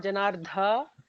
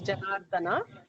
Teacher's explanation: And note that Janardana, the is an alpa prana da, it's not Janardha, it is Janardana